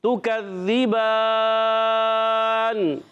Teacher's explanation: مد عارض ہوگا تو یہاں پر 3 الف 2 الف اور 1.5 الف 1 الف یہ کھینچ سکتے ہیں. ٹھیک ہے, تو آواز آئے گی تکذبان.